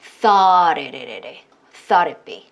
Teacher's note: 그래서 이때 또 T 사운드가 이때 GH는 발음을 하지 않죠. 그래서 모음 사이에 있는 이때 T이기 때문에 이때 T가 또 리을 소리가 나올 수가 있어요